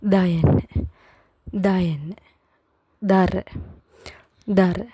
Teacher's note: கொஞ்சம் அழுத்தி சொல்லணும் எங்களோட நாக்கு நுனி வந்து இந்த மேல் பல்லுல படணும்